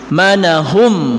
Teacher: Manahum, nah sama di sini ada mim sukun bertemu dengan mim tasdid, itu idgham mimi atau idgham mislain